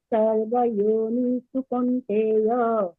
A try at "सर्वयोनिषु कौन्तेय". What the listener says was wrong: नहीं, सर्वयोनिषु, योनिषु कौन्तेय, नी पे ज्यादा देर नहीं रुकना है।